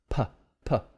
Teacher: There's also P and B, b, p, p. What's happening to the airflow? It's stopping and releasing the airflow.